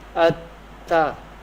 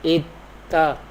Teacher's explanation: We pronounce ta twice with slight pause. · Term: mushaddad letter